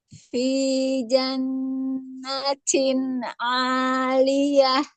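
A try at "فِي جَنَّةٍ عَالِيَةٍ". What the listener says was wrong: Em, Keraguan saya bukan di huruf tak tadi, Bu. Taknya sudah cukup tadi yang pertama. Yang kedua terlalu berlebihan ya. Jadi kan saya sampaikan jangan terlalu berlebihan hamesnya.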